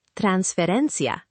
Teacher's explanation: Transferencia, stress on the ren.